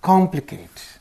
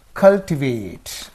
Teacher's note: one in words of more than two syllables ending in eight the primary accent is placed two syllables before the suffix two syllables before the suffix that means on the third syllable